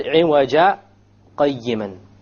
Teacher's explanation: I stopped. I didn't breathe in or out. I momentarily stopped and then I moved on. This is what is known as a sakta.